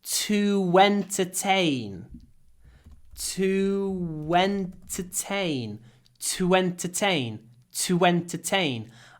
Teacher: when we say to before entertain you can hear a w sound between the words